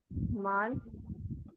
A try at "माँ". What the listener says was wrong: नहीं, नून गुन्ना है ना वो।